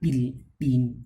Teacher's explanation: the sound in English like pill, pin, all these are produced in the wide open glottis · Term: voiceless sound